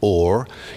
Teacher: the H drops at the beginning